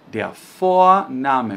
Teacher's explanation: Cuidado porque esse V tem som de letra F, de faca. Então a gente não diz Vorname, mas sim Vorname, ok?